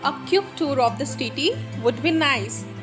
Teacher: Quick is a falling tone here, and nice is here rising tone. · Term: fall rising tone